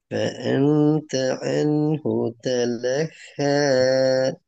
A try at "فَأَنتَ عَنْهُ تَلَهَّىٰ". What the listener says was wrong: அதுல ரெண்டு ஹாவும் மாறணும். அன்ஹு தலஹ. عين عين عين فأنت عنه تلهى.